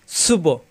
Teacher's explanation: বা সাকিন কলকলা, সুব ধাক্কা হবে, সুব। সিন জিব্বা নিচে তাতে চাপ দিয়ে সুব।